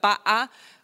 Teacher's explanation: what we call a glottal stop. It's where you stop your voice for a second.